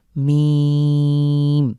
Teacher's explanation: মীম আমরা তিন second long করে পড়বো